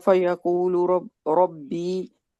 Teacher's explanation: रॉ अपनी जबर लेकर आ रही है, इस वजह से इसको हम मोटा ही पढ़ेंगे